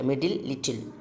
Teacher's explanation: The lateral plosives occurs when t and d are followed by the lateral sound l. t ന്റെ കഴിഞ്ഞിട്ട് ല് വരുമ്പോഴാണ്.